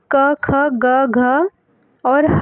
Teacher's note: कंठ में क, ख, ग, घ और ह आएगा